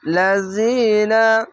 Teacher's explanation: জেরের পাশে ইয়া সাকিন আলিফ টেনে পড়বেন